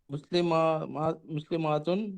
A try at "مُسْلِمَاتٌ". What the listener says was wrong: ذرا ماں کو تھوڑا کم کیجیے تو مسلمتن، مسلمتن، مسلمتن.